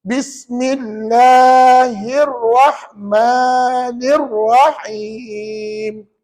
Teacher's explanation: tuan-tuan sambungkan bismi kepada Allahi, Allahi sambung pada Ar-Rahmani, Ar-Rahmani sambung Ar-Rahim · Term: hamzah wasal